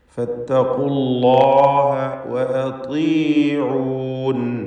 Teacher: നിസ്ബിയായ അഥവാ മൂന്നാമത്തെ ലെവലിലുള്ള തഫ്ഖീം ദമ്മായതുകൊണ്ട് ഇസ്തിഅലാന്റെ അക്ഷരങ്ങളിൽ പെട്ടതാണ് ഖാഫ്. ഫത്തഖൂ എന്നതിലെ വാവ് ഇൽതിഖാഉ സാക്കിനീൻ പരിഹരിക്കാൻ വേണ്ടി ഒഴിവാക്കുന്നു. അല്ലാഹ് എന്ന ഇസ്മുൽ ജലാലയിലെ ലാമിനെ തഫ്ഖീം ചെയ്ത് തടിപ്പിക്കണം.